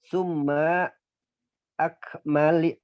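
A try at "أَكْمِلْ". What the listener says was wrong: Fi'il amr. Akmil dari kata akmala yukmilu. Akmil. Karena fi'il mudhari'nya kasroh mimnya. Yukmilu berarti tetap kasroh. Akmil.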